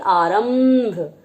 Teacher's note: जब हम आरंभ बोलते हैं तो उसमें आधे मा की ध्वनि आ रही होती है